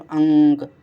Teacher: अंक बोलोगे तो नाक से सांस निकलेगी लेकिन मुंह से नहीं निकलेगी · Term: अनुस्वार